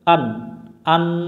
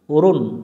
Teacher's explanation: প্রকাশ্য নুন সাকিন এর বাম পাশে ইজহারের অক্ষর আছে আইন এখানে নুনটাকে স্পষ্ট করে পড়তে হবে অর্থাৎ আ মিলবে নুনের সাথে আন আন গুন্না করা যাবে না